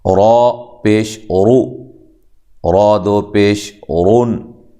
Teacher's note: تو را کے اوپر اگر پیش ہو نا تو را کو موٹا کیا جاتا ہے، خوب موٹا کر کے پر کر کے اس کو پڑھتے ہیں۔